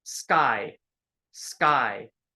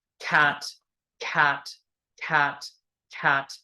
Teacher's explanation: word tat right cat cat cat cat it does move forward so in the word cat that car sound is aspirated we get a puff of air that comes out of our · forward so in the word cat that car sound is aspirated we get a puff of air that comes out of our mouth